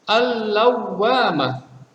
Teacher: Lamnya tidak dibaca, akan tetapi dimasukkan ke dalam huruf di depannya. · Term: Idgham syamsiyah